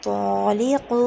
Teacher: ত যেহেতু একটি ইস্তিলার হরফ, এই জন্য এখানে মোটা করে করতে হবে